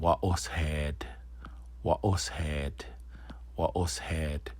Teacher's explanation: there's no N sound, and that's why you wouldn't say it's a nasal A, because it doesn't perform the nasal just like the other ones.